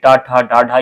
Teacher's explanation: ट वर्ग के जो वर्ण है यह मूर्धा से उच्चारित होते हैं ट ठ ड ढ ये किससे होते तो मूर्धा से होते · मूर्धा की बात करें तो टा वर्ग के कितने? तो टा वर्ग के जो वर्ण है ये मूर्धा से उच्चारित होते हैं